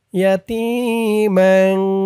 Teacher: এই তানবিনটাকে নাকের ভিতরে লুকিয়ে গুন্নাহ করে পড়তে হবে। ইয়াতীমান, গুন্নাহটা নাকের ভিতরে যাবে অনিশ্বর দিয়ে।